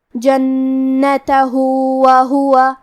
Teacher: آخری میں ہاں پہ الٹا پیش ہے. یہاں حکم ہے مد صلہ صغرا، ہم اپنی آواز 2 مد کے برابر لمبی کریں گے